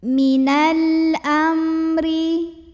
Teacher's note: Hamzah ini Alif kalau berharokat pada hakekatnya adalah Hamzah ya maka cara baca lamnya ini dibaca dengan izhar atau jelas bunyi l nya jelas tidak dipantul tidak ditahan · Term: izhar qomari